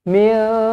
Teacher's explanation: nun kosong bertemu dengan kaf. Ikhfa' hakiki, dengungkan dua harakat.